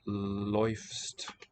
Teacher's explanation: in the you and she, he forms, we get läufst with that fronted diphthong